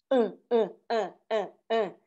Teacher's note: o pulso, o apóstrofo, indica uma parada glotal